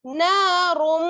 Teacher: جب ہم را کو میم سے ملائیں گے غننے کے ساتھ ملائیں گے ، ٹھیک ہے، نارم، اس طرح سے، پھر میم ہے، میم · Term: ادغام ناقص